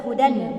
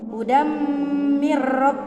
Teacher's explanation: suara nun sukun atau tanwin melebur ke huruf di depannya